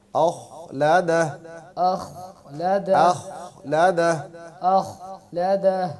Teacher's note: حمزہ جو ہے وہ باریک رہے گا، خا موٹا ہوگا